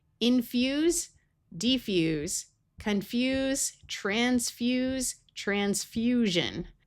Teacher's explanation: fuse, which again is a verb and has the z sound